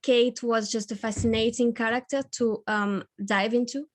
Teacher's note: your intonation was rising a little bit at the end